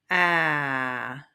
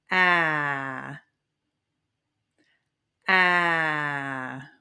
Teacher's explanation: it is a very relaxed vowel, so you might not feel much. But just that big open jaw-dropping vowel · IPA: /æ/